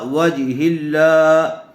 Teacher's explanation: لفظ اللہ کی لام سے پہلے والے حرف کے نیچے زیر آئی ہوئی ہے، اس لیے لفظ اللہ کی لام کو باریک پڑھیں گے